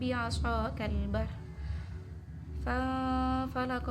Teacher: falaqa di sana nun sukun bertemu fa maka dibaca samar, yakni hukum bacanya ikhfa hakiki